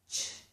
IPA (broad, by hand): tʃ